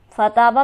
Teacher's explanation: فتابہ میں تا پر ہمارے پاس حرف مدہ موجود ہے، اسے ہم کھینچیں گے ایک الف کے برابر